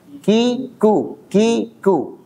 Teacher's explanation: Kaf sama ta punya sifat hamas. Tapi syiddahnya ini lebih dominan dari hamesnya.